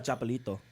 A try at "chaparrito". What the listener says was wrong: No, oh, you said it wrong. Nope, said it wrong. He's adding an L.